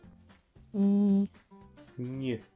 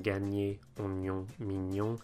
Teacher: So we don't want to say ny, but ny, very, very quickly. So the middle of your tongue is right up in the roof of your mouth, and of course you're blowing air through your nose. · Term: ny sound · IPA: [ɲ]